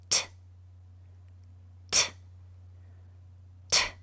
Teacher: your throat should not vibrate because the letter T sound is unvoiced